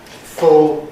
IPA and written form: fʊl (full)